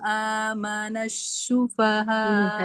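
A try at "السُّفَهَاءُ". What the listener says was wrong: Ini sin biasa.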